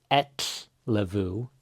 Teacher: The F is a lot more of a V sound.